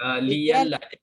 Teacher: sebab baris huruf yang sebelum tu adalah baris bawah, jadi terpaksa bunyi dia liyalla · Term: tukar jadi ya